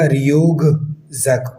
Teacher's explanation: جو ہے وہ چینج کر دیں گے زا کی وجہ سے، کیونکہ زا جو ہے وہ خود وائس کانسوننٹ ہے، تو وہ اپنے سامنے والے کو بھی وائس میں تبدیل کر دے گا ، تو یہ ریوک زک کی جگہ ریوگ زک بن جائے